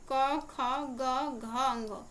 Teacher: यानी कि 2 और 4 वाले जो आते हैं ये हमारे महाप्राण होते हैं, बाकी जो यहाँ पे आ गए ये हमारे अल्प प्राण होते हैं। या अगर ऐसे कंफ्यूजन होता है तो जिसमें एच लगता है वो महाप्राण है, ऐसे करके भी याद रख सकते हैं।